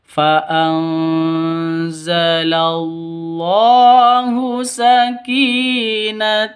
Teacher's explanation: lafdul jalalah Allahu ada di tengah berarti cuma dua ketukan panjangnya